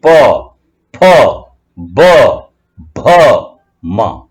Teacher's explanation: सारी लाइन में ऐसा ही प, फ, ब, भ, म, इस तरीके से सारे अक्षर होठों से मिलकर, होठों के मिलने पर और खुलने पर ये अक्षर निकलते हैं। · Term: होष्टव्य